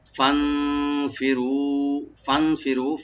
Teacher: নুন সাকিন এখানে আমরা ইখফা করব, ফি বলবো